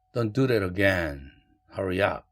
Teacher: 한국어든 영어든 명령문에서는 다 falling intonation 떨어지죠.